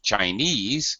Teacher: in the word just by itself Chinese the stress syllable is ease